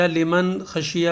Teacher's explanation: لمن خشیہ، لمن خشیہ میں اظہار کا قاعدہ ہوگا، تو اس لحاظ ہم یہاں نون ساکن کی وجہ سے غنہ نہیں کریں گے بلکہ اس کو صاف صاف پڑھیں گے